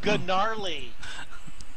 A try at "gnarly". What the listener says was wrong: No, the G is silent, you